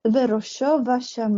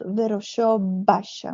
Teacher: instead of closing tightly you close only to the level of the fricatives